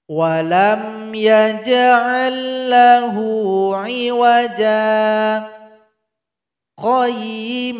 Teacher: dengan sakta sakta itu artinya kita Berhenti sejenak tanpa mengambil nafas jadi nafas kita kita tahan kira-kira 2 detik kemudian langsung kita sambung dengan bacaan berikutnya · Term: sakta wajib